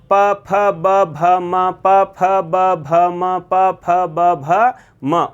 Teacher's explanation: प फ ब भ म प फ ब भ म प फ ब भ म उच्चारण करने पर अंत में प्रभावित हो रहा है वो क्या हो रहा है? ओष्ठ प्रभावित हो रहा है।